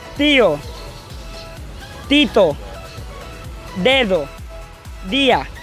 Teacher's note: La lengua se ubica detrás de los dientes superiores.